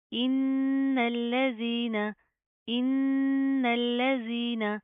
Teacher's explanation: नून के ऊपर शदा आ रही है, गुन्ना करेंगे, नाक के अंदर साउंड पैदा करेंगे, ठीक है। पहले गुन्ना करेंगे, फिर इस नून को इस लाम के साथ प्लस किया जाएगा, ये अलिफ स्किप होएगा।